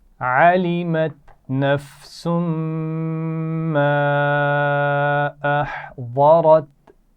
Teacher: ما پر آپ دیکھ رہے ہیں چھوٹی مد بھی ہے تو تھوڑا سا کھینچ کر پڑھیں گے